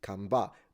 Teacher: And the P is transformed into a B, camba. But I can still recognize it because I'm familiar with campare.